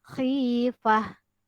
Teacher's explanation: Kalau ta marbuthah disukunkan, maka dia dibaca bunyi huruf ha. Khifah. Kita tidak boleh baca khifat.